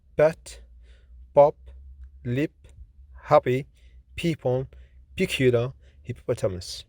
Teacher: P, which is voiceless, fortis, bilabial, plosive consonant